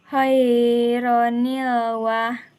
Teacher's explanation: Nun warsal terjadi ketika tanwin bertemu dengan hamzah warsal, maka huruf nun itu harus dibaca harakat kasrah.